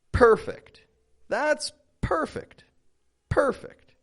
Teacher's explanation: notice how my voice raises a little bit when when I say that first per per and then it kind of just goes flat and down second half fect